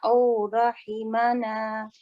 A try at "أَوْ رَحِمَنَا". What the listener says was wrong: When you say the O, don't forget the fatha a sound before the waw. أو رحمنا.